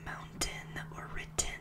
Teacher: the most notable thing is the lack of the letter t in words like mountain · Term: colorado accents